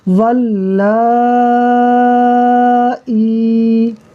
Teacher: تو دیکھیے یہ کھڑا زبر ہے تو یہ الف مدہ کے قائم مقام ہے، جب یہ الف مدہ کے قائم مقام ہے تو حمزہ الف مدہ کے بعد اسی کلمے میں ہے، یعنی حروف مدہ کے بعد، تو اس کا مطلب ہے یہاں مد متصل ہوگا